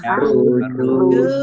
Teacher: nun sukun bertemu dengan huruf ya bacaan idgham bi gunnah masuk dengan mendengung yaitu mendengung ya ditandai ya-nya ada tasdidnya ditahan biar tampak dengungannya.